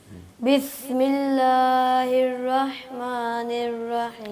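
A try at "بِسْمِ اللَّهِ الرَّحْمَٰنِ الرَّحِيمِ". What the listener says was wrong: اور را کو موٹا کرنا ہے.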